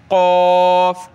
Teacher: क़ाफ को मोटा करें, गले से निकालें, क़ाफ, ठीक है।